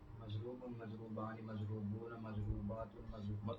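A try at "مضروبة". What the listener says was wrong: یہ لمبا کیوں کر رہے ہیں؟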